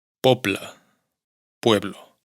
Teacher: Además, en esta secuencia, la segunda consonante suena un poco más oclusiva que la primera y, por lo tanto, muchas veces suena prácticamente sorda